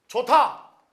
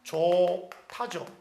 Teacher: 히읗하고 디귿이 붙어서 티읕이 되죠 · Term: 축약